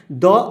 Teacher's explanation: द आपका बिल्कुल दंत है।